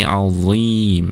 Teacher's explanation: punggung lidahnya terangkat, kemudian ujung lidahnya menyentuh atau menempel di ujung gigi seri atas bagian depan. Jadi Allah, tidak azi tapi azim ya, terlihat kedengaran tebal ya. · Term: huruf dha